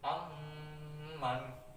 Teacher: dibacanya itu dengung dengan seperti huruf membaca mim mati double ya. Amman disertai dengan dengung ya. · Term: idgham midline